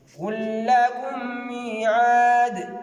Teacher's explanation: Voilà, ici il y a lam al-sukun suivi d'un lam aussi qui est fatha. On a négligé le lam de sukun et on a mis le shadda dans le deuxième harf. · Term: idgham